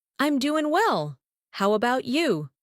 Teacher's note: how about you sounds like one smooth phrase, not separate words.